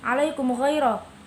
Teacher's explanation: ada huruf mim sukun bertemu dengan ghain, bacanya tidak boleh dengung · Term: idhar syafawi